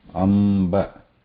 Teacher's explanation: the lip is inward here to pronounce this Anunasika ma.